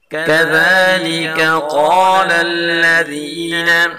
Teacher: پہلے کاف کو باریک پڑھیں گے اور دوسرے قاف کو پر پڑھیں گے